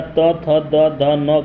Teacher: त, थ, द, ध, न का उच्चारण स्थान दंत है